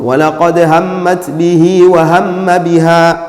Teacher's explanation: lazima utulizane pale, ulete ghunna yenye kiwango cha makadirio ya haraka mbili.